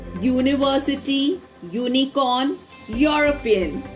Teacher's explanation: These words begin with the vowel letter U, but when we pronounce it, we get a Y sound, which is a consonant sound, so we use a before these words.